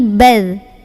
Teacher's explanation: Jadi pas lagi sukun nanti enggak bat tapi bal. Ada aliran suara.